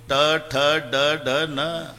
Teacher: वरच्या टाळूला जेबेचा स्पर्श आहे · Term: तालवे